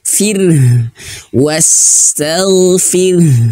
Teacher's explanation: Aib artinya disembunyikan. Jadi jangan sampai terdengar jelas untuk huruf ro ini getarannya. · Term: takrir